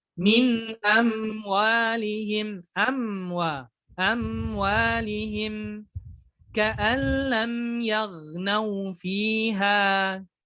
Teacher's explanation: Tapi ingat, sama seperti nun, mim ini mempunyai sifat tawassut. Maka tidak kita baca terputus, tidak juga ditahan terlalu lama.